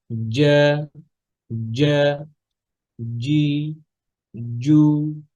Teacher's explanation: দেখেন জিহ্বার পজিশনটা, দেখেন একটু খেয়াল করেন। জিম পড়ার সময় সব থেকে বেশি উপরের প্যালেটের মধ্যে, উপরের তালুতে জিহ্বাটা বেশি পরিমাণে লাগছে।